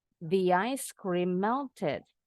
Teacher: Linking vowel to the next vowel sign. Jadi kita seperti nambahin bunyi Y.